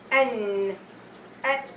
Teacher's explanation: it's a sound that comes from the nasal passage of your nose, or it is specifically with noon and meme. You can pronounce letter noon if you close your nose. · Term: ghunna